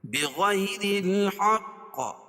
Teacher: بغیر یا ساکن سے پہلے زبر ہو تو یا لین ہوتا ہے، اس کو نرم آواز کے ساتھ جلدی ادا کریں گے